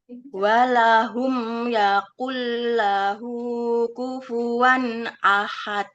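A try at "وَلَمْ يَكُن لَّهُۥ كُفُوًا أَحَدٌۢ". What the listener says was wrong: walam Ibu, bukan walakum. Walam. Walam yakullahu kufuwan ahad. Ahad. Ini ya ahad gitu ya. D-nya dibaca karena itu qalqalah kubro. Qalqalah kubro. Ahad.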